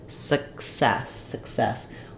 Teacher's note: we don't let that k out so you'll hear it like s s you won't really hear